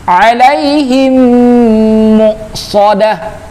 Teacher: Mim mati ketemu dengan mim, idgham mimi. Namanya idgham mimi. Wajib di dengungkan, ditahan, ya, 2 harokat.